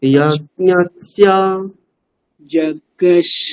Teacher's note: এখানে দেখুন উপরে স্বর রয়েছে, তাহলে আমি গলাটা উপরে উঠাবো।